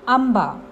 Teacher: आंबा या शब्दात अनुस्वाराचा उच्चार हलंत म असा होतो